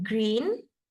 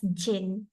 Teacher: Jadi, for example, in this case, child A, in terms of pronouncing the word green, ada masanya dia pronounce green as jin. Jadi, ini adalah error cluster reduction and affrication